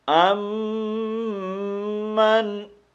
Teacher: تو یہ میم مشدد ہے، یہاں پر ہم نے غنہ کرنا ہے۔